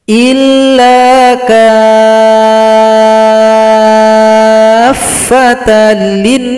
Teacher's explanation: Di sini mad lazim mutsaqqal kalimi. Panjangkan kaf 6 ketukan baru tasydid pada huruf fa